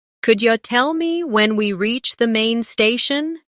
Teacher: Notice how could you becomes could ya.